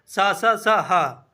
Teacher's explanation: इनके उच्चारण में वायु घर्षण के साथ मुंह से निकलती है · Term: संघर्षी व्यंजन